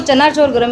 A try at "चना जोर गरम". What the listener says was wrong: चना चोर गरम नहीं, जोर गरम।